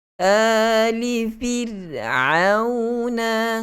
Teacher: Ali fir'auna. Ain, huruf ain jelaskan, keluarkan pada pertengahan tekak.